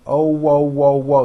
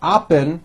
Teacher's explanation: There's a little hidden W at the very end.